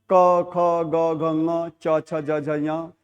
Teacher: जो मुख का अंग है ना वो किसी से टच हो रहा होगा। इसलिए उसको स्पर्श कहते हैं।